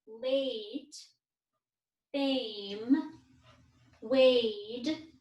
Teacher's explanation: we don't hear the e we only hear that long a sound in the middle